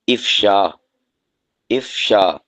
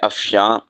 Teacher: آخر میں نون غنہ ہے